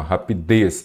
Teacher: uma palavra oxítona rapidez a sílaba tônica é a última